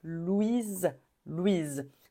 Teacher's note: c'est comme un Z à la fin Louise comme maison Louise quand il y a un seul s entre deux voyelles on prononce comme un Z